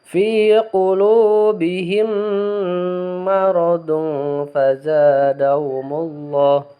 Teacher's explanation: Jadi membacanya harus dimasukkan ke dalam mim selanjutnya ya. Jadi tidak fi qulubihim maradun, tidak seperti itu, tapi dimasukkan ya, ditasdid kepada mim selanjutnya. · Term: idgham mislain